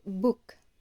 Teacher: Secondly, we have the sound b, as in the word book. The same as the sound p but voiced. You'll feel the vibration of your vocal cords.